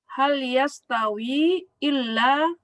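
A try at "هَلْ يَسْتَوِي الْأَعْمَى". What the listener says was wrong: Nah, jangan illa. Ini al-a'ma. Jadi hal yastawil a'ma.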